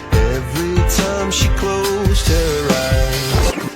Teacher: Es muy común escuchar que nativos omitan el sonido de la H